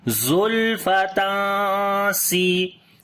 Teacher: After the tanween the next letter is seen. We make ikhfa here, like we hide the sound of noon, and also we read ikhfa in light sound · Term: ya madda